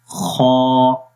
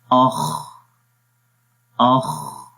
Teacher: اس کی زبان کی جو جڑ ہے، یہ پیچھے والا حصہ زبان کا، وہ اوپر کی طرف اٹھتا ہے۔ تو اس کا مطلب یہ ہوتا ہے کہ آواز بیسیکلی اوپر کی طرف جائے گی تو اس کے اندر موٹائی آ جاتی ہے، تو پڑھیں گے خا، تو یہ حرف موٹا ہے، اس وجہ سے اس کے اندر صفت استعلا ہے۔